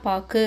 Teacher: ஒரு மாத்திரை இல்லாம அரை மாத்திரை அளவு வந்து ஒளிக்குது. சோ இந்த மாதிரிக்கு தன்னோட மாத்திரை அளவில இருந்து குறுகி ஒளிக்கிறது அதாவது ஓசை குறைந்து ஒளிக்கிறத உகரத்தைதான் நம்ம என்னன்னு சொல்றோம் குற்றிய லுகரம். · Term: குற்றியல் உகரம்